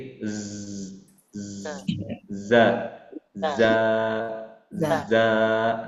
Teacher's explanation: Sofir itu adalah suara seperti desisan suara ular. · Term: shofir